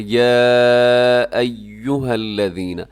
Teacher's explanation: جو مد ہوتی ہے وہ چھوٹی مد ہے جسے مد منفصل کہا جاتا ہے، 4 سیکنڈ تک جسے لمبا کیا جاتا ہے